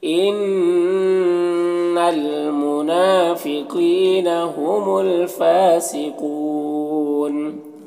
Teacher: هم الفاسقون، یہاں پر الف لام حروف قمری فا کے شروع میں ہے تو لام کو پڑھیں گے، الف کو نہیں پڑھیں گے۔ فا میں کھڑا زبر ہے، ایک الف کو برابر کھینچیں گے، قاف حروف مستعلیہ میں سے پر پڑھیں گے، اور یہاں پر وقف کی صورت میں مد عارض وقفی ہوگا تو اس طرح سے پڑھیں گے، ان المنافقین هم الفاسقون۔